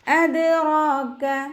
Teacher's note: മദ് ജായിസ് മുൻഫസിൽ 2-4 ഹർക്കത്ത് നീട്ടിപ്പാരായണം ചെയ്ത് കൊടുക്കുക കേട്ടോ. അദ്റാക ദാല് കൽക്കലയുടെ ലെറ്റർ ആയതുകൊണ്ട് ഫുൾ സുക്കൂനും കൊടുക്കുക